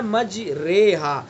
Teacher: زیر کی طرف کو کچھ جھکاؤ ہونا ہے، لیکن زیر نہیں پڑھنا ہے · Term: الف ممالہ